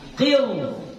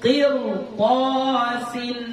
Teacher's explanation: Fathah. Berarti ra-nya di sini kita baca tafkhim.